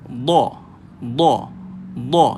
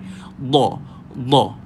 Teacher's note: Huruf dot, lidah, tepi lidah. Tak kisah kiri atau kanan. Dia menyentuh gigi geraham belah tepi.